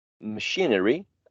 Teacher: now when you add the suffix machinery well still the second syllable is the one which is stressed